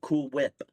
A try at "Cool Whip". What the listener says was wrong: No, you're putting too much emphasis on the H. It's Cool Whip.